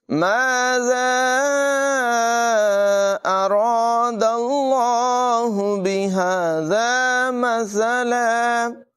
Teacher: زال کو بغیر سیٹی کے پڑھیں گے